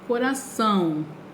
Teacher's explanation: você fala coração naquele tom nasal da palavra